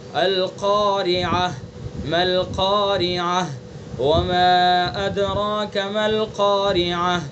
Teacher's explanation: القارعہ ما القارعہ وما ادراک ما القارعہ، تو یہ سب گول تا ہے، گول تا پر ہم وقف کریں گے تو اس کو ہائے ساکنہ سے بدل کر پڑھیں گے، یہ ہے وقف بالابدال۔